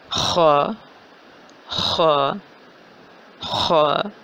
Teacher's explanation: حمزہ زبر خ، اخ اخ اخ، اس کا مخرج بنتا ہے حلق کا پہلا حصہ، زبان جہاں ختم ہو رہی ہے اور حلق شروع ہو رہا ہے، یعنی کہ ادنا حلق، اور اس کو ہم حلق نمبر 1 بھی کہہ سکتے ہیں۔ حلق نمبر 1 سے خ کی ادائیگی ہو رہی ہے